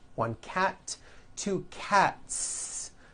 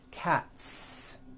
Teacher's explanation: again the s ending is unvoiced